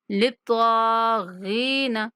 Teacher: للطاغین، تو مشدد ہے اور کھڑا زبر ہے اوپر، تھوڑا کھینچ کے پڑھیں گے، للطاغین، غائن کے بعد یا مدہ ہے تو غائن کو تھوڑا کھینچ کے پڑھیں گے